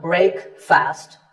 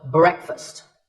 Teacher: Break with a short eh sound